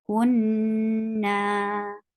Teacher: Kun, and na is 2 counts long because it's alif followed by fatha